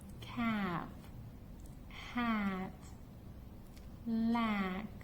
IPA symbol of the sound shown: æ